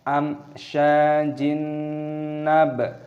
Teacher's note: Amsyajin, nah, di sini ada kasroh tanwin yang bertemu dengan nun, hukumnya dibaca idgham bi gunnah, dimasukkan dan disertai berdengung. Amsyajin nab, baknya berharokat sukun, dibaca nab.